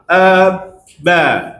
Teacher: Kita letak di bibir. Bibir tu kita rapat. Kita rapat bibir. Maka suara tadi tertahan. Tertahan. Lepas tu kita lepas. Ba. Jadi huruf ba di bibir.